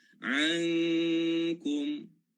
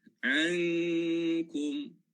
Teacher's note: Dia ada ikhfa tapi ikhfa yang sikit saja. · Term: ikhfa adna